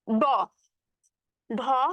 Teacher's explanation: ড ঢ মূর্ধ ন এগুলো যখন উচ্চারণ করতেছো তখন কিন্তু তোমার গলা কিছুটা কাঁপবে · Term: ঘোষ ধ্বনি